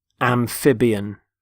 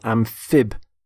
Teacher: Notice the stress on the middle syllable